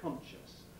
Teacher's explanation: inserting a plosive between a nasal and a voiceless fricative. Most obviously in NS sequences. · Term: epenthesis